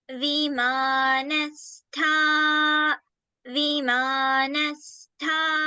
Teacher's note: in Vimanastha, we have Tha as the Mahaprana